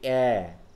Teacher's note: এ লিপ spread হয়ে যাচ্ছে, হ্যাঁ স্প্রেড হয়ে যাচ্ছে